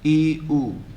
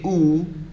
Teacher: E you feel in the front, but oo towards the root of your tongue. So the back. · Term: front vowel